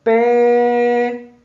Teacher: quando você canta a palavra pedra, você demora mais tempo em pé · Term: tônica